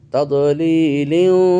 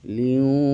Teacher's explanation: তানবিনের পর ওয়াও এসেছে, তানবিনকে ওয়াওয়ের মধ্যে ঢুকিয়ে দিয়ে গুন্না সহকারে পড়ছি। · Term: ইদগাম